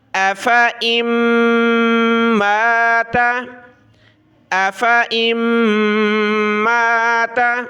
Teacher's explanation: میم کے اوپر تشدید ہے تو ہم نے ناک میں آواز پیدا کرنی ہے جس کو غنہ کہا جاتا ہے